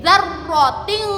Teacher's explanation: Zar, roknya bertasydid, mencucu nggih.